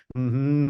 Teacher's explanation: the air is passing through the nose